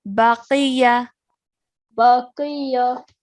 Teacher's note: because qaf has a kasra, it's going to be pronounced qi. So remember to keep that thick and heavy sound as you say it.